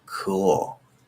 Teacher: Technically, I think the California O is a little more fronted